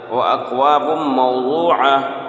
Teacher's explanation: وَأَكْوَابٌ مَوْضُوعَةٌ، یہاں دو پیش تنوین کے بعد حروف یؤمن میں سے میم ہے، اس لیے یہاں پر ادغام ہوگا، ادغام ناقص یعنی گنہ کے ساتھ پڑھیں گے